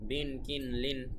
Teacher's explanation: আগে ছিল জেরের উচ্চারণ ই, এখন হবে দুই জেরের উচ্চারণ ইন।